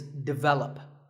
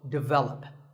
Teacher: This is pronounced wrongly by many learners of English as develop. But the first syllable is actually de, and the stress is on the second syllable